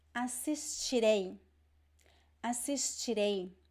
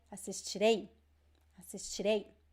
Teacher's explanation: I have this stress at the end because we have two vowels